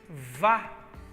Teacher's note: Antes de sílaba tônica, então usamos o A longo, Vá.